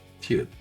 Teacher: le son aspiré, un te fort avec un souffle d'air prononcé.